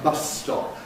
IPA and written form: ˈbʌs stɒp (bus stop)